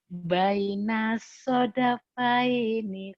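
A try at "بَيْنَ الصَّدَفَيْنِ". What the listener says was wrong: Itu udah bagus tuh bacanya, cuman tinggal lagunya aja.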